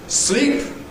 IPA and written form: sliːp (sleep)